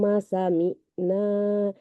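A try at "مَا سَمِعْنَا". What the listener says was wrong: Panjang. Ma sami'na. Yang ini panjang. Ma sami'na 2 harkat.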